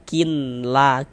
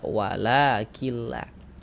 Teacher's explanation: Jadi bunyi nun sukunnya masuk melebur ke huruf lam. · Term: idgham bila ghunah